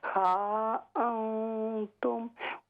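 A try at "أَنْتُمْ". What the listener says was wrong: अंतुम, लंबा करें मत को।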